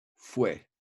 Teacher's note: When you say the word fouet, you don't pronounce the T. So the last sound you hear when you pronounce it is actually a vowel sound, in this case, e.